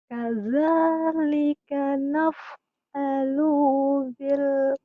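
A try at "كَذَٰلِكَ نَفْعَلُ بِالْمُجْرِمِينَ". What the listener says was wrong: Lu-nya pendek. Lu-nya pendek di situ. Ya, di situ lu-nya pendek.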